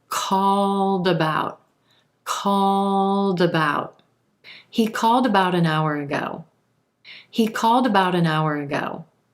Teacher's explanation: that D will link over in front of the word about and sound like dout